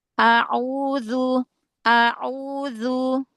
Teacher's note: Hamzah di awal ringankan lagi.